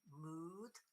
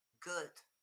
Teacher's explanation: the mood, nice and long, good, nice and short